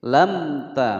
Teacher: Alam ta, a dibaca pendek, lam langsung masuk ke huruf mim. Lam ta, mim sukun bertemu dengan huruf ta, dibaca jelas, hukum bacaan idhar syafawi.